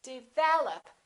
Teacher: second syllable is stressed